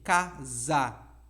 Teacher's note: O S vira som de Z em casa